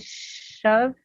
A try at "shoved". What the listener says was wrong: Shoved. Shoved. Shoved. Shoved. At the end of the word, you named the letter. You didn't make the sound of the D. You named the D. You said the name of the letter. You said shoved, shoved, shoved. The sound of D, yeah.